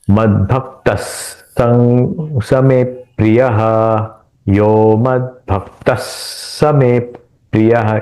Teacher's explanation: यहां पे उच्चारण करते वक्त स का उच्चारण डबल करना है